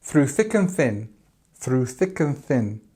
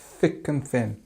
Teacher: it's the th there's no voice just thick and thin